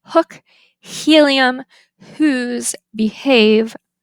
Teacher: the lowercase H which is voiceless